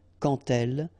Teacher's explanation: when you will have this D, you will phonetically pronounce it like T.